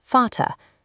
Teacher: In many German words, it shifts to an English F sound.